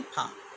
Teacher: ऊपर के दांत और नीचे के होंठ का स्पर्श होता है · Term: दंत्योष्ठ